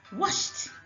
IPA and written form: wɒʃt (washed)